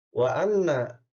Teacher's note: ada nun bertasdid, ini adalah gunah atau namanya gunah musyaddad. Bacanya dengung, ya.